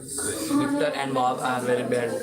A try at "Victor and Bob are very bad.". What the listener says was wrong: Okay, a little bit stronger on the second beat. Bob.